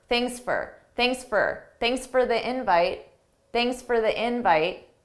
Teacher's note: For pronunciation, notice that for is an unstressed for.